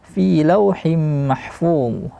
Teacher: Fi tidak boleh dibaca secara berdengung. E fi sering terjadi kesalahan membaca fi dengan dengung.